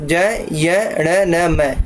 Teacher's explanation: इनका जो उच्चारण होता है वो नाक और मुख दोनों की सहायता से होता है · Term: अनुनासिक